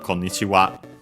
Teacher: the accent technically is accented on the last uh syllable. So yeah, and the itself uh on its own nowadays not used uh usually accented on the first syllable.